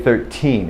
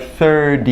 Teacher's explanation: 13 will have the stop plosive aspect of T, but 30 has the D kind of sound